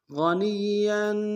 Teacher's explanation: یا کے اوپر تنوین ہے، یا کے اوپر غنہ کریں گے